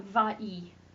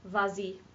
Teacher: Hopefully you're remembering all the times I've told you that they don't like two vowels together in French. We're going to put that S back so that we have something to make liaison with.